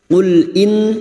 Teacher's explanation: nun yang bertasdid gunna musyaddadah kita dengungkan selama 3 harakat.